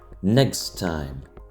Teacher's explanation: La prononciation des consonnes sourdes K et S à la fin de next est modifiée par la voyelle E nécessairement voisée qui précède et s'approche des sonores G et Z. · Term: assimilation